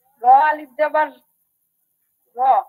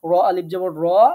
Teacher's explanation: র আলিফ জবর বলার সময় একটু টানতে হবে। এমন না যে র এর সময় আপনি বলে যাবেন র আলিফ জবর র, ত দুই জের তিন, আবার টানার সময় টানবেন, তা না।